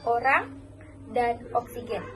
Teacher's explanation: dilafalkan dengan membesarkan bibir O dan lidah berada di posisi belakang